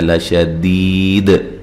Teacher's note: دال پہ قلقلہ کریں گے، قلقلہ کو واضح کریں گے وقف کی صورت میں